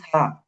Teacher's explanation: জিহ্বার আগা সামনের উপরের দুই দাতের আগার সঙ্গে লাগে